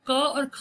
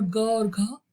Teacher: जो क और ख है ना वो कठोर है और ग और घ मृदु है